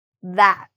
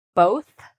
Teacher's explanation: the TH sound actually can be voiced, which means that we feel a vibration down here, or voiceless, where it's more whispery,